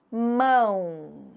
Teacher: É o som da vogal que se prolonga. Eu não, eu não escuto o som da consoante.